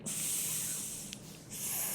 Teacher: notice there's no tongue between the teeth for the S sound